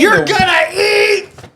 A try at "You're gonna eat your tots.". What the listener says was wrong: You're saying it so wrong. You're gonna eat your tots. That's how he says it. You're screaming it.